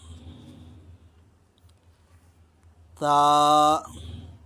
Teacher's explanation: جب آپ ثا پڑھیں گے تو اس میں سیٹی کی آواز نہیں آنی چاہیے، کیونکہ آپ نے ہدایات میں سن لیا کہ سیٹی کی آواز صرف زا، سین اور صاد میں آتی ہے، تو جب ثا پڑھیں گے تو آپ کی سیٹی کی آواز نہیں آنی چاہیے۔